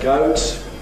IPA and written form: gʌʊt (goat)